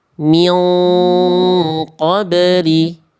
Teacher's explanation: Jadi udah siap-siap naikin pangkal lidah ketika ikhfa, biar ikhfanya nuansanya tebal karena menyongsong huruf tebal yaitu huruf qaf.